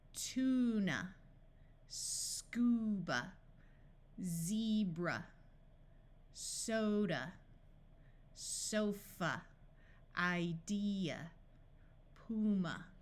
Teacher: in all of these words the underlined vowel has its long sound and the a at the end will schah